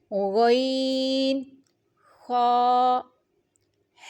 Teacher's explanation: غین، خا، حلق کے اوپر والے حصے سے ادا ہوتے ہیں۔